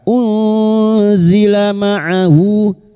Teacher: nun sukun bertemu zain ikhfa hakik samarkan bunyi nun sukun dan mendengung selama tiga harakat